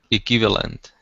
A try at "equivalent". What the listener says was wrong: But you're not saying the W. It's KW. Try again.